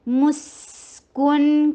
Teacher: سین کی آواز کو چلاتے چلی جائیے کیونکہ سین رخاوا حروف میں سے ہے